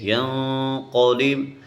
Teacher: پر نون ساکن ہے، نون کے اوپر اخفا کریں گے، ینقلب، اور یہ 2 نقطہ والا قاف ہے، اس کو ہم موٹا کریں گے